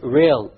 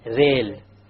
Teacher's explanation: The English R comes from the middle of the tongue, whereas the Arabic Ra comes from the tip of the tongue, along with the incisors or the gum behind the incisors.